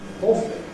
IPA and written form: ˈɔːfli (awfully)